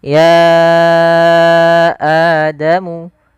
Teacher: ya panjangkan dulu ya-nya sepanjang 4 atau 5 harakat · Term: mad jaiz munfasil